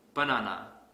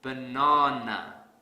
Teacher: i will stress the second syllable really hard